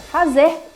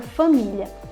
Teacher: no fazer a gente tem um a bem aberto no família a gente já fecha